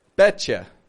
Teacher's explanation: Bet and you are the two words there, and we're bringing them together to be betcha.